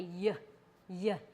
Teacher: this is a gliding sound so it kind of starts a little bit further back in the mouth and moves forward